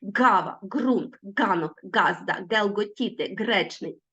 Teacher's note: звук Ґ утворюється за допомогою задньої частини язика він є глудковий Він аж наче з горла вилітає гава рунт